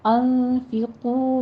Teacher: انفقو میں نون ساکن کا قاعدہ اخفا حقیقی کریں گے، اور قو میں واو مدہ ہے، قوف کو پر پڑھتے ہوئے دونوں ہونٹ گول کر لیجئے، ہونٹوں کو تھوڑا سا آگے کی طرف بڑھایا کریں تاکہ واو مدہ یعنی 2 حرکات کے برابر اس کی ادائیگی ہو جائے، صرف ہونٹ گول نہیں کرنے، تھوڑا سا آگے بڑھانا ہے۔